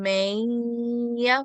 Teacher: I can feel that nasal sound producing from the top of my nose